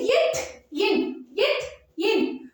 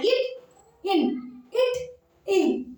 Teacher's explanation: அடுத்தது இட், இன், இட், இன் ஆகிய இரு மெய்களும் நாவின் நுனி, நம்முடைய நாக்கோட நுனி இருக்கு இல்லையா, அந்த நுனியும் அன்னத்தின் நுனியே பொருந்துவதால் பிறக்கின்றன